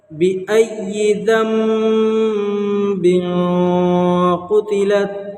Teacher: یہاں پر با ہے نون ساکن کے بعد، اس لیے نون کو جو ہے میم سے بدل کر پڑھیں گے، اس کو اقلاب کہتے ہیں